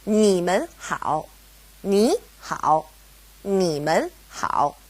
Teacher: It's a toneless tone, or a neutral tone, mun. Now, because we have mun separating ni and hao, they both go back to being third tone